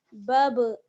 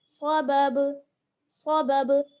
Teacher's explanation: با پر جو ہے وہ کیا ہوگا, قلقلہ ہوگا جزم کی وجہ سے. با زبر بب, بب, یعنی دونوں ہونٹ جو ہیں لپس آپ کے ٹچ ہوں گے اور ٹچ ہوتے فوراً الگ ہو جائیں گے.